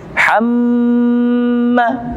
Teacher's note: ada mim bertasydid, maka hukum tajwidnya adalah gunnah. Didengungkan dan ditekan sebanyak kurang lebih 2-3 ketukan